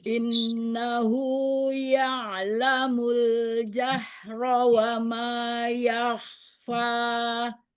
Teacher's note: Di in, durasi nun tasydid. Nun tasydid akmal matakun. Durasi gunnahnya paling sempurna.